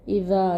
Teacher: الف مدہ مد اصلی حرکتیں مقدار کھینچ کے پڑھیں گے۔ الف مدہ کو باریک پڑھیں گے کیونکہ اس سے پہلے حروف استفعال میں سے زال آ رہا ہے۔